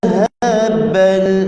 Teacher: حرف ذال hujung lidah serta hujung gigi atas